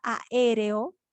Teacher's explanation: la mayor fuerza de voz recae sobre la ante penúltima sílaba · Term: esdrújulas